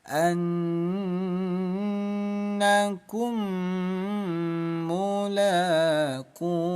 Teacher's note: mim sukun bertemu mim, hukumnya idgham mimi. Dengungkan 2 ketukan.